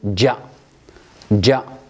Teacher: لا بد من انغلاق ثم اهتزاز، فنقول جاء يا جعلون يا ج وسط اللسان كما قلنا في هذا المقام، وليس يعني انحباس تام، بل لا بد من فتح للمخرج بسبب الاهتزاز والاضطراب، أي القلقلة التي تحدث في هذا المقام. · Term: الجيم